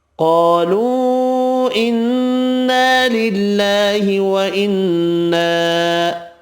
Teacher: قاف حروف مستعلیہ پر پڑھیں گے، الف مدہ 2 ہیں، قا اور نا دونوں ایک ایک الف کی مقدار میں کھینچ کر پڑھیں گے